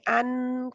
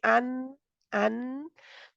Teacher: दो दांतों के मसूड़ों से जुबान लगी होती है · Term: नून